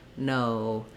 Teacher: In English, ours glides O from a rounded O to a more closed sound. So when I say the word, for example, no in English, I have to close my mouth, relax my tongue a little bit, relax the rounding. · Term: diphthong O